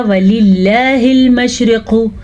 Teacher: یہاں پہ ہم نے لفظ اللہ کو باریک پڑھا تھا کیونکہ لفظ اللہ سے پہلے زیر تھی